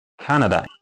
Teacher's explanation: So for example this word because it's a noun language say that we need to stress the first syllable